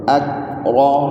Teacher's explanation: ایسے کاف باریک کر کے پھر را کی موٹی آواز